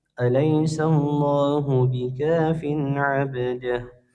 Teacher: tanwinnya dibaca jelas tanpa dengung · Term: izhar